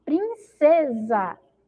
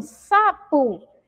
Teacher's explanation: em princesa, o si tem o som de Z. E em sapo, o si tem som de si